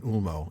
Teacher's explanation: if it's at the end of the word like in Ulmo, it's a long O as in English foe